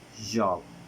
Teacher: according of voicing it is voiced. According of the place of articulation it is alveolar. According of manner of articulation it is affricative.